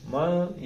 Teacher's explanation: اس کو ناک سے ادا کرنا ہے. زبان تالو کے ساتھ نہیں لگا. زبان ایسے ہوا میں رہے.